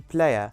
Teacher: which is composed of the diphthong /eɪ/ + the vowel sound /ə/ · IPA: /pleɪə/